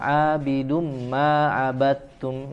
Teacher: Ana abidum huruf ain lagi ya dari tengah tenggorokan abidum ya, tanwin dhammatain ketemu huruf mim ya, maka melebur ya, cara membacanya dileburkan bunyi suara tanwinnya ke huruf mim abidum dan ditahan ya, ada tambahan gunnah, tidak dibaca tergesa-gesa abidum · huruf ta. Mutajanisen itu sejenis ya, sejenis makhrajnya satu makhraj ya, huruf dal dan ta itu sejenis, tempatnya sama, makhrajnya di ujung lidah bertemu dengan gusi gigi seri bagian atas ya, tetapi cara membacanya diidghamkan ke huruf ta ya, jadi huruf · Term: idgham mutajanisen